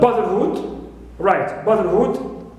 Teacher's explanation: Hood here is also neutral, and bra is stressed, first one as usual